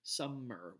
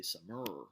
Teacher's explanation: the sum is stressed, the mer is unstressed.